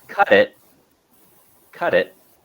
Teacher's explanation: you can see that I don't pronounce the T